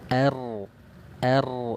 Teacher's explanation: Takrir artinya apa? Ujung lidah bergetar.